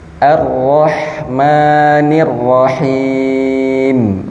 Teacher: Mim. Nah, mim dia sama dengan nun gunnah, jadi dimasukkan ke mulut dan udaranya dikeluarkan di hidung.